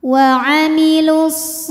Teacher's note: alif lam ini tidak perlu kita baca dimasukkan langsung ke Shad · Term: Idgham Syamsi